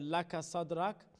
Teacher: sad is full mouth because it has the quality of isti'ala